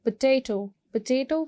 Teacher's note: Potato को भी आप second syllable को stress करोगे.